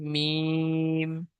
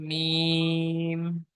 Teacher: 15 নম্বর মাখরাজ দুই ঠোঁটের শুকনো অংশ মিলিত হয়ে উচ্চারিত হয়